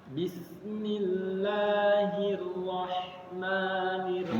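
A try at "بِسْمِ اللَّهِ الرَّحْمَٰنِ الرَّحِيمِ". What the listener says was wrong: Ma-nya jangan tebal. Me.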